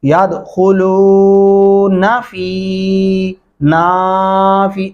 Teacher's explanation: نون کو لمبا نہیں کرنا، ان دونوں کو اکٹھا پڑھتے ہوئے فا کو لمبا کر دیں ، یہ نون اپنے آپ ٹھیک ہو جائے گا، جیسا کہ